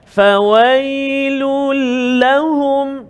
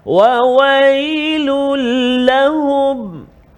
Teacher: masukkan tanwin ke dalam huruf lam tanpa dengung, tak boleh dengung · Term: idgham bila gunnah